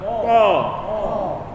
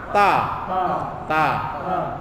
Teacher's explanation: lidah bagian ujung lidah kenakan di akar gigi seri atas. Akar gigi seri atas.